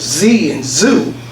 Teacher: the sound of Z and zoo, we'll feel them, our vocal folds vibrate. They express then this voicing as plus, which would be vibrating voice, or minus, no vibrating.